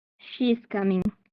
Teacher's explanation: For the sentence type of statements, it did have a falling intonation.